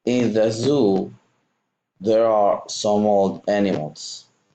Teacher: So here you're linking old and animals. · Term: consonant to vowel linking